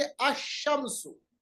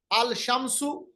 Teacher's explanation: यानी लाम को हमने पढ़ा ही नहीं, अशमसु। हालांकि आपने यहां देखा कि शीन पे हमने तशदीद लगा रखी है, मगर आप याद रखिएगा अगर शीन पे तशदीद भी ना हो اس کے باوجود بھی لام نہیں پڑھا جائے گا۔